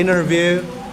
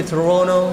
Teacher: n plus t you can delete the T sound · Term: American Style